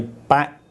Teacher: there's an expulsion of air for the K, back, because I release that final K sound.